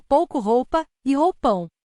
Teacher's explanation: a semivogal U funciona como uma espécie de glide deslize que se aproxima da vogal U e forma um único som na mesma sílaba